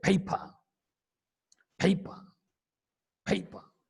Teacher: The first P is aspirated, whereas second P is not aspirated